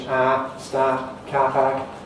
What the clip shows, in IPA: staːt